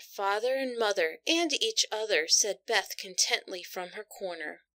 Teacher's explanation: you can hear the sibilance when i read the word said in the recording